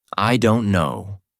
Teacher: stretched with a sigh can convey resignation or frustration